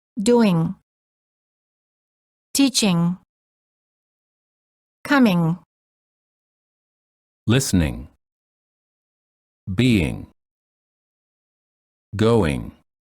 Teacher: To create the NG sound, raise the back of the tongue and let it touch the soft palate, which is the back soft area of your mouth. Don't release your tongue when you say the G, or just release it slightly. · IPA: /ŋ/